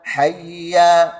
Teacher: Huruf ha itu berada di pangkal halkum, pangkal ha. Hayya. Kemudian ditekan dengan pada sifat syiddah di situ.